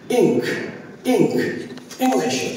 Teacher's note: আমাদের জিবার মানে ব্যাক পার্টের পেছন অংশে টাচ করবে এবং নাক শিকার বন্ধ করে দিবে যাতে বাতাস না বের হতে পারে